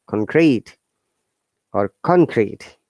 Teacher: Okay, so if you would like to use this one as a verb, it should be the other way around. So it's down intonation to upper intonation